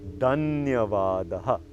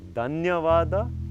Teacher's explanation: The word for thank you is Dhanyavadaha. Now please note, it's not Dhanyavada, it's Mahaprana, Dhanyavadaha.